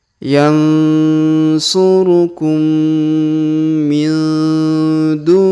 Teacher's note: huruf ni langsung sambung ke huruf ro yang berharakat tasdid